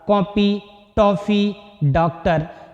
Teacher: इसका उच्चारण आ और ओ के बीच की ध्वनि के आ के रूप में होता है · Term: आगत